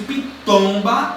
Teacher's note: fotos é o tom pitomba se alguma motel última sílaba penúltima se a penúltima sílaba mais forte então a palavra pitomba é uma palavra paroxítona · Quando eu pronuncio pitomba, a sílaba mais forte é o tom.